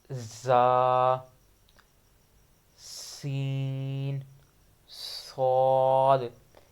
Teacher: اس میں صاد موٹا ہے اور ان حروفوں کو سختی کے ساتھ پڑھنا ہے اور ان میں سیٹی کی آواز نکالنی ہے